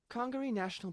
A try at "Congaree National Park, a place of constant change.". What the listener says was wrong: Big pause again. Low in level. Too stilted.